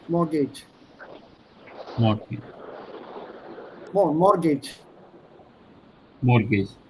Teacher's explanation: Don't pronounce the T. The T is silent in English.